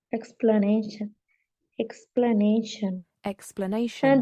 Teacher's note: The correct answer is the stress is on the third syllable.